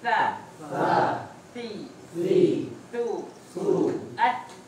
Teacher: Ujung lidah ketemu ujung gigi seri atas.